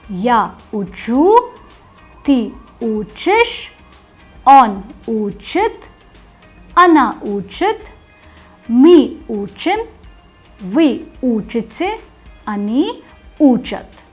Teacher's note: In the ya form the stress is on the ending, and in the remaining forms the stress moves to the stem.